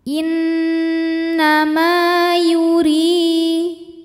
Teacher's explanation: berharakat fathah maka huruf mim dipanjangkan dua harakat saja innama Yuri huruf ro dibaca secara tarqik Sebab harakatnya di bawah kasrah